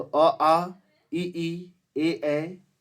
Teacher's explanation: वे स्वर जिनका उच्चारण करते समय ओठगोल नहीं होता है अपितु फैल जाता है · अ, आ, ठीक है, छोटी ई बड़ी, अ आ छोटी ई बड़ी, और ए ये ऐसे है ना, देखिएगा, ये अग्रभाग से भी है और अवृत्ताकार है। इनको सब बोलते समय मुंह फैल जाता है लेकिन गोल नहीं होता, ओठ गोल नहीं होता है। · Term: अग्र अवृत्ताकार